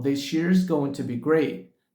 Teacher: Então this com year, a junção dessas duas palavras surgiu daí o som de X